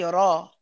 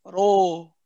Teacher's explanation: When you say ra, if you look at my mouth, ra, I'm not saying ro. My lips don't go round, right? Ra. You feel your jaw is being dropped, but you're not opening your mouth.